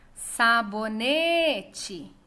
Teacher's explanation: Ne é a sílaba tônica e ela é a penúltima da palavra. Então, é uma palavra classificada como paroxítona.